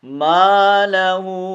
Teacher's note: इस हा को हम दो अलिफ की मिक़दार में खींचेंगे, चूँकि मद आ गए ना, इसको छोटी मद भी कहते हैं, मद मुनफसिल भी कहा जाता है।